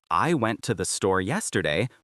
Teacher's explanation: The function words, I, to, the, are unstressed and quick. This creates a da-dum, da-da-da-dum rhythm.